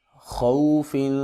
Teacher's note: خو کے اوپر لین کریں گے اور خا کو موٹا کر کے پڑھیں گے کیونکہ یہ حروف مستعلیہ میں سے ہے۔